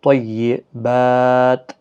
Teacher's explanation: با کے اوپر کھڑا زبر ہے، ایک الف کے برابر کھینچ کر پڑھیں گے، اور جب وقف کریں گے تو 3 سے 5 الف کی مقدار کے برابر کھینچ کر وقف کریں گے، کیونکہ یہاں پر وقف مطلق ہے، اور تا کی حرکت، تا کو ساکن کر دیا جائے گا، اور ملا کر اگر پڑھیں گے تو پھر تا کی حرکت کو بھی پڑھنا ہے۔